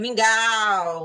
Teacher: Bem alto, mingau, né? Como eu falo, mingau fechado, então é U